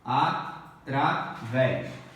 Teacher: A última sílaba é tônica. Então é uma oxítona.